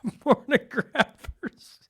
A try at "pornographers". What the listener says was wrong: Okay, well, you put the emphasis on the wrong syllable.